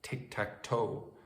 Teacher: tic-tac-toe what Americans call knots and crosses that starts high and ends low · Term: descending vowel pattern